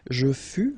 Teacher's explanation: keep in mind that final S is not pronounced